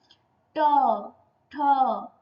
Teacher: ट जिधर जीवा लग रहा है उसको मूर्धा कहते हैं